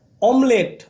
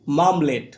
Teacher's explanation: অমলেট আমরা বলছি মামলেট ম ধ্বনির আগমন ঘটেছে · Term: আদি ব্যঞ্জনাগম